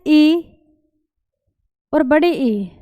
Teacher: ई और बड़े ई, इन दोनों का जो उच्चारण होगा वो तालुष्य होगा